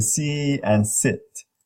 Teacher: But we have E and I, as in see and sit, up front, high front.